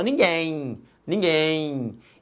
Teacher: então repare que no final este M representa um ih aqui representado foneticamente pela letra Y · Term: ditongo fonético